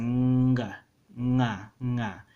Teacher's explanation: The ng letter is a velar nasal, so it's a nga, right?